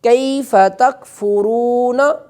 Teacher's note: کاف باریک ہے، کتاب والا ہے، اسے باریک کر کے پڑھیں گے